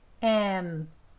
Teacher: 읍하고 공기 막는 데서 숨 참기에서 끝납니다. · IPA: /ˈemp.ti/